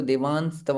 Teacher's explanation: तो जब आप देवास्तव बोलेंगे तो आपके ओठ एक दूसरे को बंद नहीं होने चाहिए।